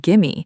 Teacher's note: When native English speakers talk at normal conversational speed, give me blends together